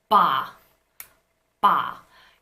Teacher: you're going to feel that there is a vibration in your throat from the get-go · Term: voicing